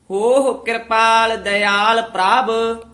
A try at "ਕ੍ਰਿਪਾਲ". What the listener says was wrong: ਕਿਰਪਾਲ ਨਹੀਂ ਕਹਿਣਾ, ਰਾਰੇ ਨੂੰ ਲਾ ਕੇ ਕਿਰਪਾਲ।